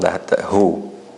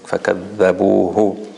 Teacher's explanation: you have to spend more time on that who, right? You said it as if there was a sukoon. You fixed it later on, but still the timing was not enough.